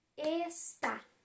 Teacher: 2 sílabas. A sílaba forte é o tá, que é a última. Então, está é oxítona.